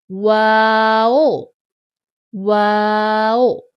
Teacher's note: तीन अल्फी जितना लेकिन होठों के गोल करने से वाओ अदा होता है